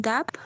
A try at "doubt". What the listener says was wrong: Make the you a little bit more noticeable, like ow, doubt, doubt.